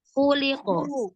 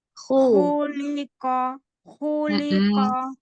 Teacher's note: Khu, pangkal lidah diangkat. Suara ke langit atas.